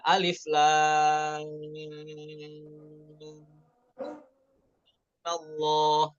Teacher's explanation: cara yang kedua dengan qasar, yaitu mimnya dibaca 2 harokat